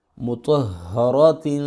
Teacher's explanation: یہ ہا سینے سے نکالیں گے، اس کو سینے سے، اس کی ہائے جس طرح ہم کرتے ہیں ہائے، تو یہ وہ والی ہا ہے.